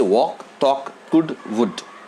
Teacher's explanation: C-O-U-L-D. But in all these words, the L is silent. We don't pronounce L. We don't say could, we don't say would, we don't say walk, we don't say talk, but we say walk, talk, could, would.